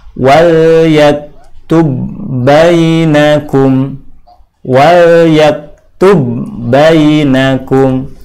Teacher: Ba yang pertama jadi seolah-olah menghilang.